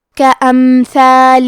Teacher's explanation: حرف الثا کی ادائیگی زبان کے سر اور اوپر کے دانتوں کے اندرونی کناروں سے ہے